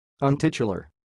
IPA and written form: ʌnˈtɪtjʊlər (untitular)